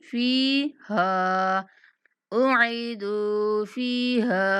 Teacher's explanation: فا اور ہا دونوں کو 1 سیکنڈ تک لمبا کرنا ہے